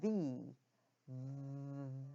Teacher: the upper teeth come down to the the bottom lip and the air is forced out vibrating that bottom lip · you can actually feel the lip vibrating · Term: the sound V